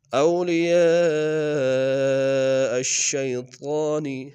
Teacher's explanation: اولیاء الشیطان، اولیاء میں یا کے ساتھ الف مدہ کے اوپر مد متصل ہے، کم سے کم تین الف انداز میں کھینچیں گے